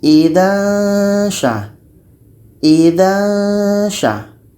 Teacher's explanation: Ketika kita baca tanwin ini, maka seolah-olah kita sudah merasakan huruf sya. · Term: dengung